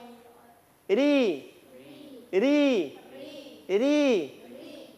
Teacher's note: Jangan tempel di gigi itu lidah. Ya, di langit-langit. Langit-langit yang agak kasar.